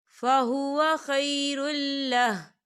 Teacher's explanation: یا دیکھیں آپ کو چھوٹی سی توئم بھی نظر آ رہی ہے، تو ہم یہاں وقف کریں گے، یہ وقف مطلق کی علامت ہے. وقف کی صورت میں ہا جو ہے ساکن ہو جائے گا